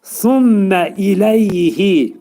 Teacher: Thummə mə'idğam mə'al gunnədir. Mim hərfi burun daxilində sıxılacaq. Amma uzadılmayacaq. Bəzi vaxtı Quran oxuyanlar bundan thummə şəklində deyirlər.